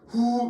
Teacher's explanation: 목청 소리는 당연히 목청 소리고 실제로 후 이렇게 얘기하다 보면 어때요? 목 안쪽에서 깊은 곳에서 올라오죠.